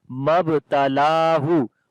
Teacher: There is alif madda. Mabtalahu, on the ba we make qalqala, which is the weak qalqala. Lam we long due to standing fatha on it as we say Mabtalahu.